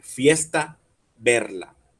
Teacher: Pero en fiesta proseguimos de T y A, y en verla la proseguimos con L y A. Tenemos la misma vocal a pesar de que no tenga la misma consonante, y son rimas asonantes, fiesta y verla.